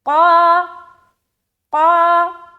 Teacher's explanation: قاف جو ہے موٹا حرف ہے تو جب اس کو کھینچیں گے تو یہ بھی موٹا ہو جائے گا الف